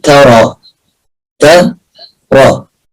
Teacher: التاء مرققة، الراء مفخمة. بقول تاء مش بقول طاء، ما نقولش ألم ترى، لا خطأ، التاء مرققة.